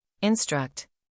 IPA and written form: ɪnˈstrʌkt (Instruct)